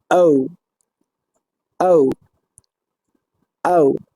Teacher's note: the vocal fold separate and vibrate, vocal fold উন্মুক্ত অবস্থায় থাকবে এবং কম্পিত হবে